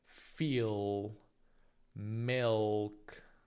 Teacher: Quando pronunci questa L, la parte posteriore della lingua si alza verso gli alveoli. Abbiamo una pronuncia velarizzata, si dice, soprattutto a fine sillaba. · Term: dark L